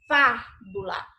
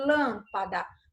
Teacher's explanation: Você percebe quando você vai pronunciar aí o fá, você abre mais a sua boca? Você tem que abrir ela com mais intensidade? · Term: som é esse aberto